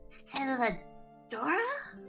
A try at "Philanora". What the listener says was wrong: Philanora, N with an N, little one.